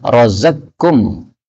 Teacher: ini qaf ketemu dengan kaf, boleh idgham. Razaqkum. Ini semua adalah qiraah mutawatirah, sumbernya dari Sayyidina Rasulullah sallallahu alaihi wasallam.